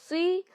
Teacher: स्वाद जो है हरूफ मुस्तालिया है, हमेशा मोटा पढ़ा जाता है